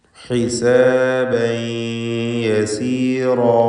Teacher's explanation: ഹിസാബൻ എന്നതിലെ തൻവീനിനെ യായിലേക്ക് ലയിപ്പിച്ച് മണിക്കണം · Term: ഇദ്ഗാം ബിഗുന്ന നാഖിസ്